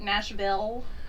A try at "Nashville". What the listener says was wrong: Ville. It's Vol. Anyone that says Ville. Vol. You say Ville.